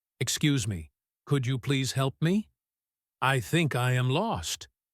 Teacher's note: Notice how the voice goes up a little bit at the end of the question.